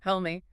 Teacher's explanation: The vowel in me is very short and unstressed.